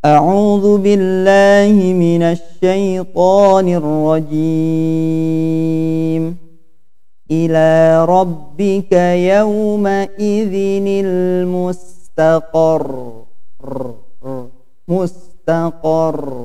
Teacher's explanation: ro-nya bergetar ya, ujung lidah bergetar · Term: sifat at-takrir